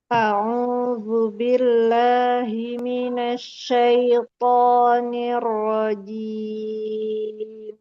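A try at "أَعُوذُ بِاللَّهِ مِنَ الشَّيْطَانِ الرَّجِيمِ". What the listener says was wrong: Oke, udah bisa ya.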